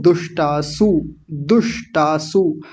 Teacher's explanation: पहले मूर्धन्य शकार आधा बोलना है फिर तुरंत उसके बाद एकदम दंतीय सकार आ रहा है तो दोनों का भेद पता होना चाहिए।